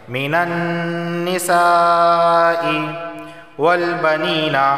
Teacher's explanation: یا سے پہلے زیر ہے تو اسے 1 الف کے برابر کھینچ کر پڑھا جائے گا